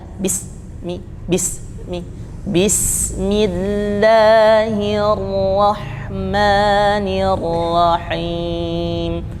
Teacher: hembuskan dulu, tidak langsung ke mimnya, ya, bismillahi, jadi jangan ditahan, bismi, bismillahirrahmanirrahim.